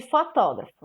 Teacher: a sílaba tônica é a antepenúltima então ela é uma proparoxítona